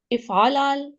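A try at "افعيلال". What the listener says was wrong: افعیلال، افعیلال، یہ آئین کے آگے یا ہم لگا دیں گے، افعیلال.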